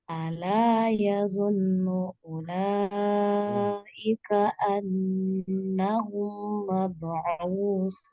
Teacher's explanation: di sini gunahnya yang nun pertama kurang panjang, nun yang kedua sudah tepat, mim yang kedua kurang panjang